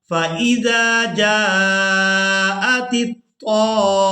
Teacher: زبر طام، فَإِذَا جَاءَتِ الطام، میم زبر ما، فَإِذَا جَاءَتِ الطام، اب یہاں میم مشدد ہے تو ہم نے یہاں پر بھی غنہ کے ساتھ ہی ادا کرنا ہے